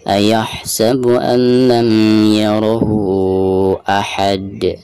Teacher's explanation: Huruf qalqalah posisinya ada di ujung bacaan, maka dihukumi qalqalah kubro dan cara membacanya itu harus dipantulkan dengan suara pantulan yang tebal ya